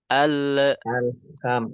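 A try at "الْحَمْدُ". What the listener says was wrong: kenapa bisa mantul seperti itu? Karena ketika membaca belum sempurna. Ya, al lamnya belum sempurna, tapi sudah dilepas lidahnya. Al, tapi alham, alham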